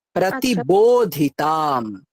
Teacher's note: তুমি বোটা দুটো ঠোঁটকে চেপে উচ্চারণ করো, এটা বর্গীয় ব।